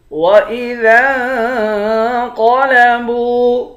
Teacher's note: ذال کو نون کے ساتھ ملا کر نون پر اخفا کریں گے، قاف کو موٹا پڑھیں گے، با کو واو کے ساتھ ملا کر ایک الف کی مقدار کھینچیں گے، اس پر مد ہے، اس مد کو 3 الف کی مقدار کھینچ کر پڑھتے ہیں۔